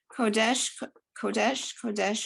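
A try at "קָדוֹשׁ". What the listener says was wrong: look at the vowel under the kuf. You were right, ka.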